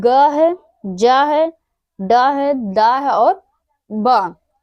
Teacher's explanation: ग है, जा है, डा है, दा है और बा, ये हमारे सघोष अल्प प्राण है